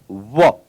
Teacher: वकार का उच्चारण स्थान दंत और ओष्ठ से मिलकर बनेगा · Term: दंतोष्ठ